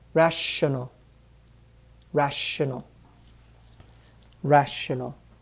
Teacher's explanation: that t i o n combination making a sh sound